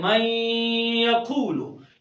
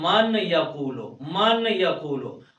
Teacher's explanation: यहाँ नून का या में हमने इदगाम किया